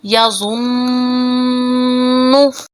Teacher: یہاں پر زوا کو ہم موٹا پڑھیں گے اور نون پر غنہ کریں گے، اس کو اس طرح سے ادا کریں گے یا ظنو۔